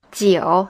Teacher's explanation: jio is in the third tone